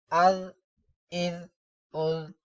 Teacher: اب ذال پر سختی نہیں کریں گے، سیٹی کی آواز نہیں آنی چاہیے۔